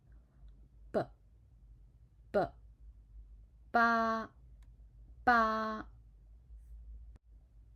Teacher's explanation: b is a bilabial unaspirated consonant · B is a bilabial unaspirate consonant. To pronounce b, you need to close your mouth, then let the air go through your mouth and use your lips to block the air.